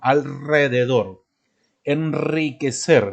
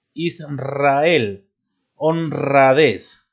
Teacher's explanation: Después de las consonantes, tanto la L, la N y la S, después de ellas, también irá la R fuerte